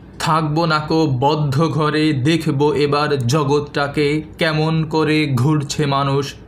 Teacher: এর প্রতি পর্বের প্রথম যে বর্ণ বা অক্ষরটি রয়েছে যেমন থাকবো বদ্ধ দেখব জগৎ এই বর্ণগুলোর উপরে আমি একটু জোর দিয়ে আবৃত্তি করেছি বা উচ্চারণ করেছি এটাই হচ্ছে শ্বাসাঘাত অর্থাৎ উচ্চারণের সময় যখন কোন